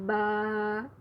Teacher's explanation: با جو ہے ہونٹوں کے گیلے حصے سے ادا ہوتا ہے